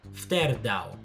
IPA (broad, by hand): fterˈdaw